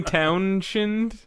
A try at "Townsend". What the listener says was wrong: Townsend. The SH is silent. Townsend.